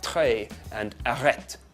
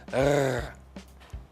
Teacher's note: If you had grown up in France, while you were growing up, you would have learnt the R sound that they use for the letter R there, that you get in words like très and arrête. It's right at the back of the mouth. It's called a uvular trill.